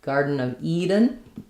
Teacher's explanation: Both garden and Eden have the D is a flap, so it's a nice light touch